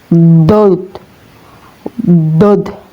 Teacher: Diharakati fathah maka dibaca d ya. Huruf dod ini ya keluar dari tepi lidah atau sisi lidah baik itu sisi kanan atau kiri ya teman-teman. Lebih gampangnya dari arah kiri atau kanan ya terserah.